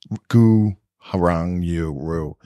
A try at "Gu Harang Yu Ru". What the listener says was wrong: Did you just keep adding syllables there? Extra syllables.